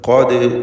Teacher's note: ഖാഫിനെ തഫ്ഖീം ചെയ്യണം, തടിപ്പിച്ച് ഉച്ചരിക്കണം. ദാലിന് സുക്കൂൻ വന്നതുകൊണ്ട് ഖൽഖല സൂറ നൽകി ഉച്ചരിക്കുക. ശബ്ദം ഹർക്കത്ത് പോലെ ചലിപ്പിക്കുക.